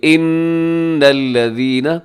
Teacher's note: نون مشدد ہے اور یہاں پہ آپ نے غنہ کرنا ہے